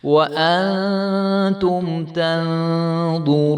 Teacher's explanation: ضاء اور را کو جو ہے ہم نے خوب موٹا کر کے ادا کرنا ہے